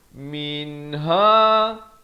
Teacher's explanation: nun yang ada tanda mati asli jangan panjang, terus masuk ha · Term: izhar